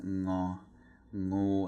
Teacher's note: Ngo is produced in the back of your throat by pressing your tongue against the back of your throat. It's like the ending of the word rang.